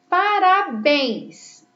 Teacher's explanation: Olha que a última sílaba é a mais forte, por isso ela é uma palavra oxítona e terminada também em ens.